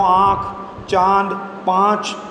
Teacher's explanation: इसके उच्चारण में नाक और मुंह दोनों का उपयोग होता है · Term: अनुनासिक